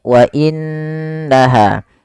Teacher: Apabila ada nun berharakat tasydid kita hukumi dengan bacaan ghunah. Yaitu suara nunnya kita tahan dengan sepanjang dua harakat.